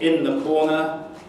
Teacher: in the corner a fricative turns into a nasal.